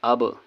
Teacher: جیسے حمزہ با زبر اب، یہاں پر با کے مخرج میں جو ہے ایک آواز واپس آتی ہے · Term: قلقلہ